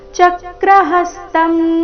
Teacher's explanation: ಚಕ್ರಹಸ್ತಂ ಚ ಮತ್ತೆ ಹ ಮೇಲೆ ಆಘಾತ